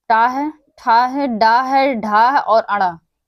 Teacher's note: तो टा है, ठा है, डा है, ढा है और अड़ा, ये 5 हमारे हैं, ये मूर्धा से उच्चारित होते हैं। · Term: मूर्धन्य